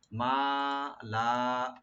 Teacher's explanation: মিম open রেখে লাম open রেখে একালে করে টানবেন